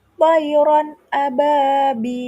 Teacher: Pada kata thariron a ada fathah tanwin bertemu alif. Itu termasuk bacaan izhar dan harus dibaca jelas. Tidak boleh dibaca dengung atau samar. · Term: idhar